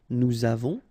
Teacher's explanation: final S not pronounced, and then we make this little link between the two, nous avons, vous avez, a Z at the end will produce this E sound, avez, little link between the two, vous avez, ils ont, okay, final T not pronounced, and then we make the liaison, ils ont, elles ont.